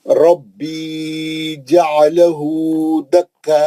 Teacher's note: مد متصل ہے یہ، کیونکہ حمزہ ہے تو مد متصل ہے. اب ہم جیسے ہی آپ حمزہ کو ساکن کرے، جھٹکا ہو گیا، حمزہ ساکنہ بن گیا